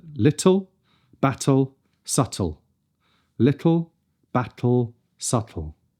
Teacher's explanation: The tip of the tongue goes to the same place on the roof of the mouth, but instead of the tip then moving down to let the sound burst over the top of the tongue, the t, we keep the tip pressed against the alveolar ridge, just behind the teeth, and let the sound release over the sides laterally. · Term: laterally released